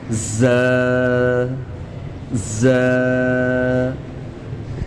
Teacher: زا کو ہم سیٹی کی آواز نکال کے سختی کے ساتھ پڑھیں گے 1 الف کے برابر کھینچ کر۔